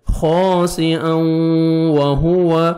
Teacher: تنوین کے بعد حروف یرملون میں سے واو ہے، آپ نے ادغام کرنا ہے غنہ کے ساتھ، نوز میں ساؤنڈ لے کے جانا ہے